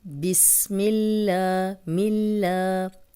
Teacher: اللہ کا لام اور پیچھے زیر تو لام باریک پڑا جائے گا